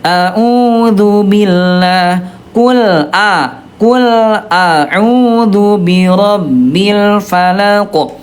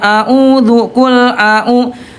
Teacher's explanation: Ayah bunda yang betul adalah hamzah dulu baru ke ain ya, a'u gitu ya.